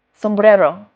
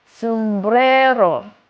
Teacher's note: The second to last syllable you have to put stress on >> always the second.